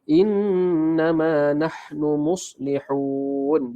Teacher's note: Jangan lupa dengung sebab nun tadi bersabdu nama dia wajibul gunnah.